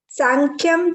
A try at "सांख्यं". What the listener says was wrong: Sankyam, it is not Sankhya, it is Sankyam.